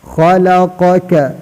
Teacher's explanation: الذی خلقک، خلقک قاف بڑا قاف ہے، قاف کو سیدہ کرنا، قاف اس طرح ادا ہوتا ہے. زبان کے آخری حصہ اوپر نرم تالو سے لگا کر اس سے بڑا قاف ادا ہوتا ہے